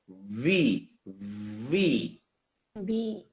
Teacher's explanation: ভি টা হচ্ছে নিচের ঠোঁটের পেট নিচের ঠোঁটের ভিজা অংশটা উপরের দাঁতের আগা